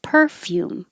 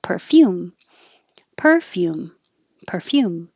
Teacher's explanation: stress on the first syllable, perfume, or stress on the second syllable